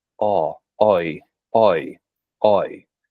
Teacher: I've chosen to give this New England accent that oi variant instead of the I variant